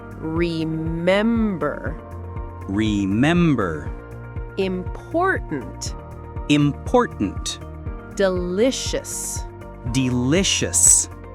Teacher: some three-cllable words have stress on the second syllable, >> the middle one.